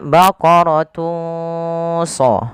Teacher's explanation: samarkan suara tanwinnya kepada huruf shad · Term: ikhfa